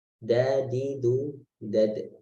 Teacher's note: sifat qalqalah dipantulkan. Jadi ketika sukun dipantulkan.